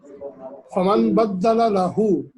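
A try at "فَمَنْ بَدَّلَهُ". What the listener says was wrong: یہ ڈبل لام نہیں ہے، ایک لام ہے. بدلا،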